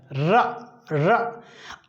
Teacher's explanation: क्या रीजन है कि जब भी र का उच्चारण किया जाता है, र र, आप देखते हैं कि जीभ ऊपर की तरफ मुड़ जाती है, ऊपर की तरफ मुड़ जाती है और मसूड़ों से जा लगती है, र र। तो ये जीभ जो है, जीभ ऊपर की तरफ मुड़ जाती है, मुड़ जाती है। · प्रकंपित इसलिए कहते हैं कि जीभ में कंपन होता है। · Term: लुंठित व्यंजन, प्रकंपित व्यंजन